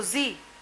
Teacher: તાલવ્ય પરિસરમાં કંઠ્યનું તાલુકરણ કરે